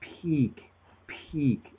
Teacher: there's a point at which you open your mouth and then there's a delay and then you begin vibrating your vocal cords